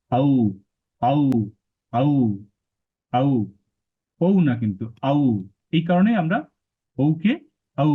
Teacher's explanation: ঔ এর উচ্চারণ কণ্ঠষ্ঠ